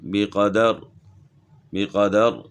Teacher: را ساکن ہونے کی وجہ سے را موٹی پڑھی جائے گی، اور اگر ہم 2 زیر پڑھتے ہیں تو پھر باریک ہوگی.